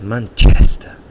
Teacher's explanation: he really exaggerates the chest, and that's where the stress is in that word